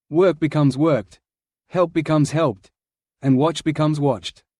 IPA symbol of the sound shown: t